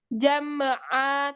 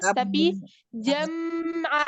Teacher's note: Nah, mim sukunnya alirkan, nggak boleh dipantulkan.